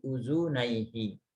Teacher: karena bergabung dengan hi atau ha domir, kata ganti, maka nunnya hilang menjadi uzunaihi